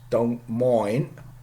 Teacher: glottaling after N, final glottal, T glottaling